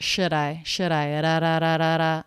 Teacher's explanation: The word should, I would say is, I would write that with a schwa, should I. The D is a flap sound because it comes between 2 vowels or diphthongs.